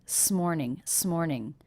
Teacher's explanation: it's almost like the S went on the next word